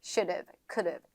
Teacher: D 사운드를 리을로 바꿔주시면 돼요